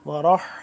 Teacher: یہ والا جو حا ہے حلق کے سب سے اوپر والے حصے سے ادا ہوتا ہے